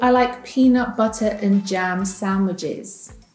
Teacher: When reduced, the word and is replaced with an en sound.